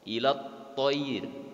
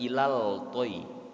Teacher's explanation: alif lamnya tidak terbaca karena langsung ke huruf to. Ilat toir, bukan ilal toy, tapi langsung ke huruf to. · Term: alif lam syamsiyah